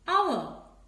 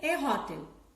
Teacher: You know, the letter H is silent. The word is beginning with a vowel sound, hour. So we can use the article an before this word, an hour.